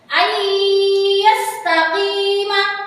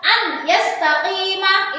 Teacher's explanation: Jadi cara membacanya itu harus dimasukkan dengan mendengung. Tidak boleh dibaca jelas seperti ini, seperti idhar. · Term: idgham biguna